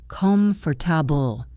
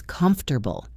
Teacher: a native speaker says comfortable. The middle sounds get swallowed.